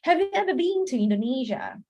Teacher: in the British English they make it long pronunciation for the bean